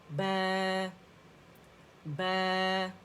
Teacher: آواز اوپر جائے گی. ٹھیک ہے، بے کر کے نہیں، امالہ نہیں کریں گے، اوپر جانی چاہیے